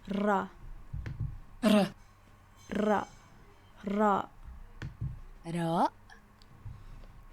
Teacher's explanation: in Arabic you roll your R's